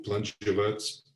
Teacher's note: Et il n'est pas besoin de changer la position de l'accent. L'accent reste toujours sur plân. Alors, l'explication, et là il faut faire un petit détour, l'explication, elle tient à une particularité de la phonologie du roumain, c'est que le i final, dans la plupart des mots, n'est pas véritablement prononcé.